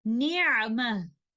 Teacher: And the second case occurs when we choose to stop on a word that ends with ta marbuta, which is written like this: around ta, whether it has a fatha, dhamma, kasra, or tanween, fathatain, dhammatain, kasratain. Upon stopping, the ta marbuta changes into ha, and the word is then stopped with sukoon al-mahab, the pure sukoon. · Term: waqf bil ibdal